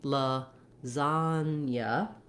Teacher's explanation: you can see how only one of the A's says the true ah vowel